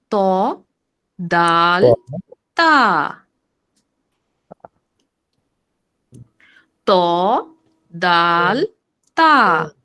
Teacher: আমি আমার দাঁতের গোড়া থেকে একই সাথে তিনটা অক্ষরকে উচ্চারণ করতেছি কিন্তু তিন রকম শব্দ বের হচ্ছে আওয়াজটা তিন রকমের শুনতে পাচ্ছি ত দাল তা ত দাল তা